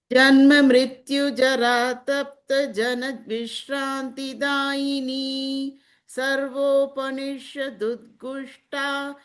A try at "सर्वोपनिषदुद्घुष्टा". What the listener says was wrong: now it became Gushta. So now Gha Mahaprana has to Gush.